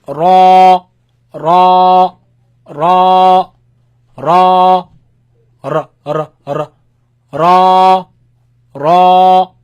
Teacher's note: it comes from the tip of your tongue touching the front palate roof all right this is sound is the sound when the tongue